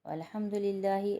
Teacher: اللہ کے نام کو باریک پڑھیں گے کیونکہ اللہ کے نام سے پہلے زیر ہے۔